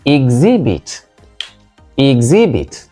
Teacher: whether you use it as a verb or as a noun the word is correctly stressed on the second syllable